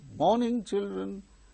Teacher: when we go with a greeting or exclamations like that we go with falling tone